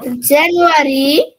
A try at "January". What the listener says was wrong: না, হলো না, সবাই কিন্তু ভুলগুলো থেকে শেখো, এটা জানুয়ারি হবে না, অর্থাৎ আটাকে ছোট্ট করে বলো, বলো জানুয়ারি, জানুয়ারি।